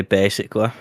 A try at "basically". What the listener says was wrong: said it so quick.